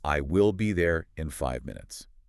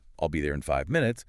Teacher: A native speaker is much more likely to say it quickly, linking words like, "I'll be there in 5 minutes." Maybe the "in 5" blends together, the stress falls strongly on 5 and minutes